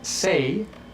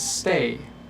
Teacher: The difference between say and stay is actually a little pause right when the T happens.